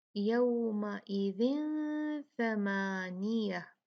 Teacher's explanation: یہاں پہ کیا ہے یہاں پر ہے تو کسرتیں 2 تنوین ہے اس کی زیر کی لیکن آگے ثا ہے. ثا حرف جو ہے وہ اخفا حروف میں سے ہے تو یہاں ہم ادغام نہیں بلکہ کیا کریں گے یہاں پر ہم اخفا کریں گے